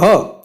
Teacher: હ છે એ કંઠ્ય છે, કંઠમાંથી બોલાય છે, એટલા માટે હ રહ્યો એનો પ્રકાર થાય કંઠ્ય।